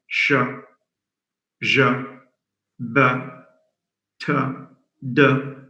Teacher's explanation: Either it goes out through the mouth, like sh, j, b, t, d. All these are oral sounds.